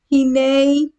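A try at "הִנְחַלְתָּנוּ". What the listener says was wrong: No A. Heen. Hin hal ta nu.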